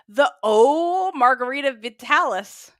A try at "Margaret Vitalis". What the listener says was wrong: got alcohol in the brain again. She just pronounced Margaret as Margarita.